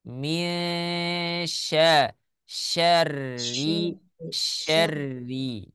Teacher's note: pasti bibirnya monyong karena terdengar Min Syar Syar Nah ya hati-hati huruf syin tidak ada sangkut pautnya dengan bibir ya dia makhrajnya ada di tengah lidah